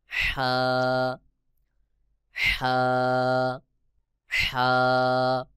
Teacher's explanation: হা হলো গলার মধ্যখান থেকে হা উচ্চারণ হবে।